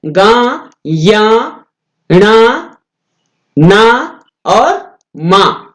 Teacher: यह वर्ग के पंचमाक्षर मान, पंचमाक्षर मतलब वर्ग जो हमने अभी ऊपर बात की थी, कवर्ग चवर्ग टवर्ग तवर्ग पवर्ग, उनका जो 5वां अक्षर होता है गा, या, णा, ना और मां, ये जो है ये पंचमाक्षर माने जाते हैं, ये अनुनासिक होते हैं। यानी नाक से, नाक और मुंह दोनों से बोले जाते हैं।